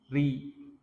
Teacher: Bacaan tebal dengan mengangkat lidah dan bacaan tipis, lidahnya diturunkan. Ri ini tipis karena dia berharokat kasroh, lidahnya turunkan ketika baca.